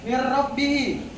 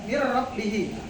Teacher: dari huruf nun ketemu ra, dia tidak didengungkan tetapi dilangsungkan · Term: idgham bila gunna